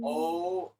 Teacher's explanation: Or I try to, when I'm just saying Om, I try to hold the Om, like the O as long as I can and the M as long as I can